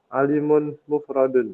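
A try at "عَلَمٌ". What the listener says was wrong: Alamun, bukan alimun. Alamun mufradun.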